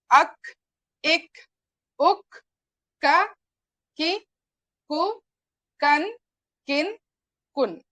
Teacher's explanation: مخرج اقدی پڑجیب کے بیرونی حصے سے قاف کے مخرج کے قریب سے نکلتا ہے کاف